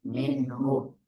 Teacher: வமீருல் ஹாவுக்கு முன்னால சுக்குன் வந்தா வமீருல் ஹாவை நீட்டக்கூடாது